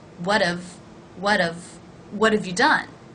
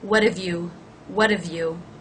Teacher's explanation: the vowel is actually reduced from ought to the schwa